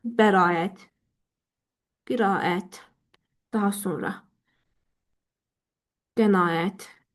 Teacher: Fikir versəniz, bəraət sözündə A-nı uzun tələffüz edirsiniz.